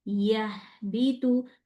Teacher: ہا کو جاری رکھنا ہے، روکنا نہیں ہے. اگر میں اس کو جلدی پڑھوں گی، یعنی اس ورڈ پہ جب ہا آئے گا تو ہا کے اوپر میں نے اس کو تھوڑا ٹائم دینا ہے.